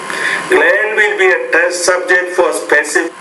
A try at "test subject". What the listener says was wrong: It will be a test subject. Test subject. Again, make that T with a little bit more air, aspirate more out of the vocal tract. A test subject.